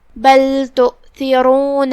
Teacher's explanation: کلمت بل میں لام پہ جزم ہے تو ہم لام کو ظاہر کریں گے · پھر یہاں را ہے اور اس پہ پیش ہے. را کا حکم ہے تفخیم، ہم اسے بھاری آواز میں پڑھیں گے